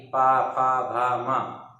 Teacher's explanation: ये जो ओठ की स्पर्श से बोले जाते हैं, इसलिए इन्हें हम क्या कहते हैं, ओष्ठ्य वर्ण कहते हैं